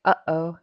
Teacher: you're stopping the air in the middle